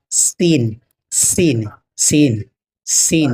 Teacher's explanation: سین بھی جو ہے زبان کے بیچ کے حصے سے ادا ہوتا ہے، زبان کے بیچ کا حصہ سین، سین۔